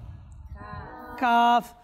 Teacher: এই হরফ উচ্চারণের স্থান হচ্ছে জিহ্বার গোড়া, তালুর শক্ত অংশ থেকে উচ্চারিত হয়।